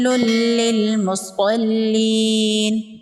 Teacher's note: صاد حروف مستعلیہ میں سے ہے، صاد کو پر پڑھیں گے۔ یا مدہ ہے، ایک الف کے برابر کھینچ کے پڑھیں گے۔